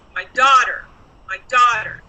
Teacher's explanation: first word my is a pronoun and it was not stressed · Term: stressed words